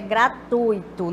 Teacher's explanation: nós temos aqui um ditongo e não hiato